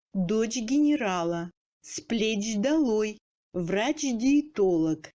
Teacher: Dans le chaîne parlé, le tché, en position finale de mot, devant l'initiale sonore du mot suivant, prononcé sans pause, donne dj.